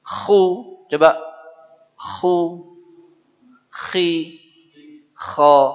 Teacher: Kalau mau buang dahak itu tempatnya kha.